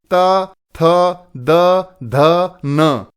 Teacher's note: इसी तरह से अगर देखें त वर्ग इनको बोलते समय जिहवा यानी जीभ दांतों को स्पर्श करेगी